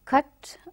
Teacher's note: Cut, it is a central unrounded vowel just above open